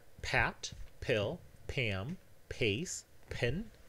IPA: pʰɑt pʰɪɫ pʰæm pʰeɪs pʰɪn